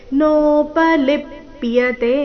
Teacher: ಲಿ ಮೇಲೆ ಆಘಾತ ಕೊನೆಯತೆ ದೀರ್ಘ